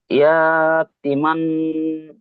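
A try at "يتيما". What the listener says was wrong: জি, ইয়া টান নেই, ইয়া টান নেই, টি টান আছে, আপনি ইয়াটা টান দিচ্ছেন, টি টান দিচ্ছেন না, বরঞ্চ ইয়াটা টান হবে না, টি টান হবে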